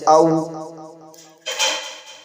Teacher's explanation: واو غیر مدہ دونوں ہونٹوں کو گول کرنے سے ادا ہوتا ہے، جیسے او۔ ان حروف کو ہمیشہ پر پڑھیں۔